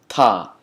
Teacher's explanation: use your tongue to touch your teeth, the tip of your tongue to touch your teeth to say ta. And again, it's like you're spitting, but that's the only helpful analogy that you could get by pronouncing the T and the D.